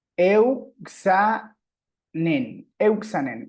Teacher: El acento va al principio, euxanen. Bien, ahí tenemos ese diptongo.